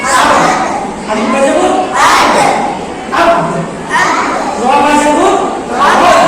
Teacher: দুটো বর্ণ আছে, যে দুটো বর্ণ একটা ভিজে অংশ থেকে উচ্চারিত হয় আর একটা শুকনো অংশ থেকে উচ্চারিত হয়। তাহলে বা যে বর্ণটি রয়েছে এটা উচ্চারিত হয় ঠোঁটের ভিজে অংশ থেকে, অর্থাৎ ভিতর থেকে।